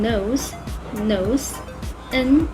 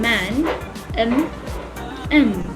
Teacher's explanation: When you articulate nasal consonants, the airflow in your mouth is completely blocked, letting the air pass through your nose. So, for example, N in nose, nose, N, and M in man, M, M.